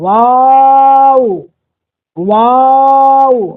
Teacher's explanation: دونوں ہونٹ جب آپس میں نہ ملے تب جا کر کے واو ادا ہوتا ہے